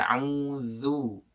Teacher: ujung lidah bertemu dengan ujung gigi seri atas jadi seperti digigit